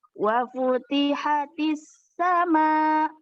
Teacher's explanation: Ada alif lam tapi dia tidak terbaca. Itu alif lam syamsiah.